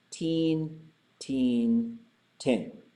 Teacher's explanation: the vowel will be long and high, long and low, or short and high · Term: stem variation